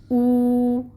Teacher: ٹھیک ہے، پھر یہاں پہ اگر واو ساکن سے پہلے پیش آ جائے تو وہاں پہ ہم پہلے پڑھ چکے ہیں کہ واو مد ہوتی ہے، تو اس کو ہم دو حرکت لمبا پڑھیں گے. او، اور پیش کے لیے بھی ہونٹ گول ہوں گے اور واو کے لیے بھی ہونٹ گول ہوں گے.